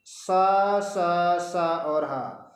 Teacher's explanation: उष्म व्यंजन दिया गया है क्यों दिया गया है क्योंकि इन सा सा और ह के उच्चारण में जो ध्वनि है वो घर्षण के साथ हमारे मुंह से बाहर आती है घर्षण से ऊष्मा उत्पन्न होती है इसलिए इनका नाम ऊष्म व्यंजन